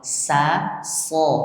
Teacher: Itu dua-duanya keluar dari makharijul huruf yang sama. Ya, sin dan shad itu sama-sama keluar dari gusi bagian bawah. Jadi, ujung lidah menempel pada gusi bagian bawah.